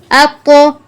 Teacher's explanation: اب یہاں پر طا پر قلقلہ بھی کرنا ہے، تفخیم بھی کرنی ہے